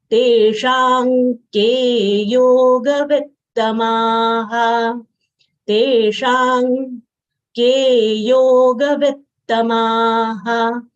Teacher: Teshang, te long sound followed by retroflex, sh having long a sound followed by anuswar. Anuswar sound here is half nasal consonant of guttural varga, that is anga.